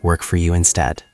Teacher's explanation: Notice the rising intonation at the end because it is a question.